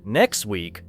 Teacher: The final T in next may be very weak.